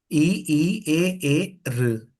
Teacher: इ ई ए र सब आगे से है। जीभ सब में आगे टच है। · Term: अग्र स्वर